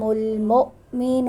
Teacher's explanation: مؤمن پہ حمزہ ساکن ہے تو جھٹکے سے ادا کریں گے